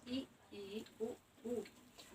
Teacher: ऐसे स्वर वर्ण जिनका उच्चारण करते समय हमारा मुख लगभग बंद रहता है मतलब पूरा बंद नहीं लेकिन लगभग बंद रहता है उन्हें कहते हैं संवृत स्वर।